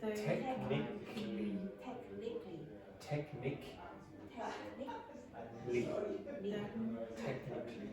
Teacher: So don't pronounce the A. So just say technically.